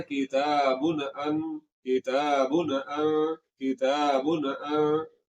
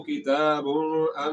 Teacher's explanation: तो तनवीन के बाद हमजा जो कि हरूफ हल्की में से है, तो हमजा के आ जाने की वजह से यहाँ पर गुन्ना नहीं होगा